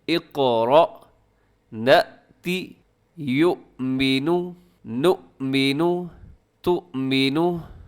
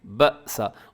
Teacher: جزم جب حمزہ کے اوپر آتی ہے تو اس کو جھٹکے کے ساتھ پڑھا جاتا ہے